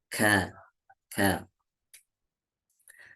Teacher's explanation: Setelah dibunyikan kemudian terbuka dan keluar nafasnya. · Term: huruf kaf